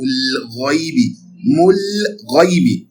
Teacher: You pronounce the lam clearly because it appears before al-ghayn. Al-ghayn is part of ibghi hajjaka wa khufakima.